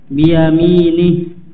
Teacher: Biyami di sini mi dipanjangkan dua harokat